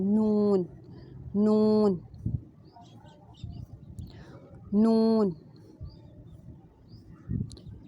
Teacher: جب انیاب سے ثنایا تک دانت جو ہیں وہ ٹچ کریں گے زبان سے تو نون ادا ہوتا ہے